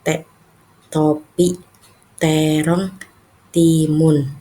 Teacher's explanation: Huruf T ini pengucapannya tidak ee jauh beda dengan huruf S karena ee huruf T ini ujung lidah itu bertemu dengan gigi atas dan gigi bawah bertemu berada di tengah-tengahnya.